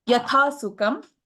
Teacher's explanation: Yatha sukam, tha is a mahaprana, and kha is a Mahaprana.